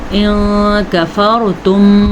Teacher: را کو پور پڑھنا ہے کیونکہ را ساکن سے پہلے زبر ہے